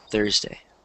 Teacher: you don't want to stress day, you want to stress Thurs. Because that's the first syllable. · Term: stress on the first syllable